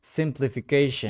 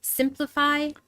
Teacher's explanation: five syllables. So again the long vowel sound I becomes short I